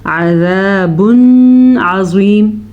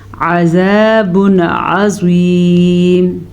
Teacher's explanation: جب نون ساکن یا نون تنوین کے بعد آئین آ جائے تو نون ساکن یا تنوین کو ظاہر کر کے پڑھتے ہیں، بغیر غننے کے پڑھتے ہیں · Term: اظہار کا قاعدہ